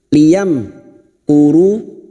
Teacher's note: mim sukun bertemu Kaf Idhar syafawi maka mim sukun dibaca jelas tanpa mendengung Liam Kuru mim sukun mendengung hanya bertemu dengan dua huruf yaitu